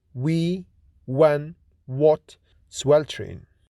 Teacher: W is voiced bilabial glide or approximant